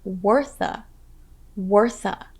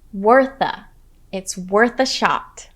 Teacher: notice how we link the words worth and a so you hear wortha